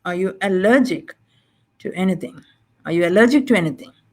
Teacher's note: it's overall rising but allergic takes an additional stress